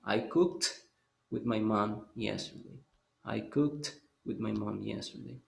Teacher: Recuérdense que ese cooked es porque la ED se va a pronunciar como T en ese caso